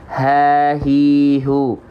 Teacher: H besar keluar dari pangkal tenggorokan sama dia juga punya sifat hams mengalirkan nafas tapi karena keluarnya dari pangkal tenggorokan maka karakteristiknya biasa haihu selesai